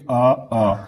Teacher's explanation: जब आप बोलोगे आ तो आपको ऐसा लगेगा गले से आवाज आ रही है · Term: कंठ